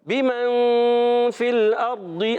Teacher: بمن میں اخفا غنہ بھی کرنا ہے